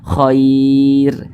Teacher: Kemudian huruf ro ini dibaca tipis, jangan dibaca khair, tapi dibaca tipis, khair. Dibaca tarkik, ro-nya dibaca tipis.